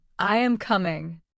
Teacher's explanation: Your voice goes down on coming.